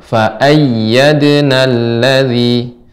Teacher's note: Nah, setiap ya bertasydid itu di ditekan, ditinggikan